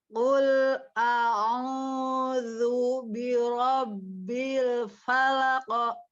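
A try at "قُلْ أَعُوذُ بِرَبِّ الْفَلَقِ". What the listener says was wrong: Falaq. Bukan, jadi bukan falako, itu bukan falako gitu ya. Kalau falako berarti itu harokat, langsung ditabrak saja ya. Ya, karena dia hanya pantulan saja ya, bukan harokat. Jadi jangan berubah ya bentuk mulutnya ketika dia pantulan pas kita ngucapin huruf qafnya. Falaq, bukan falak.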